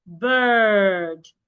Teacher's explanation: Again, when you have letter R after a vowel letter, most times the vowel will make a long sound because of the R that I have after the I in this word, the I will make a long sound